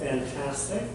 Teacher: Our stress is in the middle